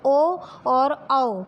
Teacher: होठ से उच्चारित वर्ण है, इसलिए इनको कंठोष्ठ बोला जाता है। यानी कंठ और ओष्ठ से उच्चारित वर्णों से मिलकर ये बने हैं, इसलिए इन्हें कंठोष्ठ बोला जाता है।